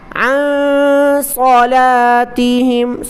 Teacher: نون پر اخفا کریں، عن یعنی ناک میں آواز چھپا کر پڑھیں